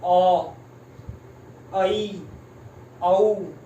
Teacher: मुख द्वारा पूरा नहीं खुल रहा, जैसे आ में पूरा खुल रहा है, अ, ऐ, औ आधा खुल रहा है, तो ये अर्धविवृत होंगे।